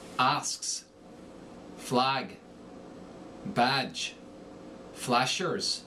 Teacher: And the short A becomes the short O.